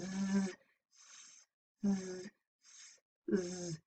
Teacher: So if we say s and z, z, z, you can feel the buzzing, the hissing in z, because the vocal cords are vibrating for z